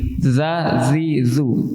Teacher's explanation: Jika kita mendengarkan dan mengamati dengan saksama, akan ada getaran. Namun getaran ini tidak mengandung udara, tidak melibatkan pernapasan. Ya, dza. Jadi untuk huruf dza, tekan lidah ke gigi. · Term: huruf zal